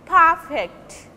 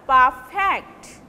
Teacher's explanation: As a noun, they will take stress in the first syllable, and as a verb, they will take stress on the second syllable.